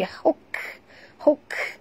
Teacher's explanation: Bunyikan hamas pada huruf kaf yang mati.